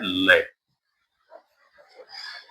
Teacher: पार्श्विक व्यंजन होता है लय, इसमें लय बोलेंगे तो जीभ का अग्रभाग उठ जाता है और जीभ के पार्श्व से श्वास वायु निकलती है